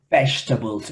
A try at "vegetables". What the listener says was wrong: La segunda E no se pronuncia.